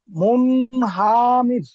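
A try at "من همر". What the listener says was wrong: মুন হামির, হা টান দিচ্ছেন কেন? মুন হামির। হুম, মিম নুন পেশ মুন, হা যাবার হা, মুন মুন হামির, মিম নুন পেশ মুন, হা যাবার হা, মুন হা, মিম রজের মির, মুন হামির।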